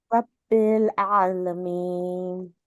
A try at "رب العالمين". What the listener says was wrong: Raising your tongue for the ra. Rab. Rabbil alamin. In English, ra is from our lips. So we say like rabbit, Robert. We use our lips for ra in English. So you gotta really go slowly and hear yourself.